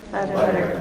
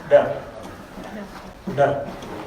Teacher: in linguistics we call it an alveolar tap. The tip of the tongue is hitting the roof of the mouth.